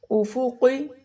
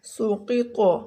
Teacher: قاف موٹا پڑھا جائے گا، افقی